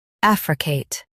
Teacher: Stress AF and say Kate clearly. AF re Kate.